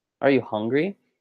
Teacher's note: But even though hung in "Are you hungry" has a low pitch, as you said, "Are you hungry?" The syllable hung is stressed.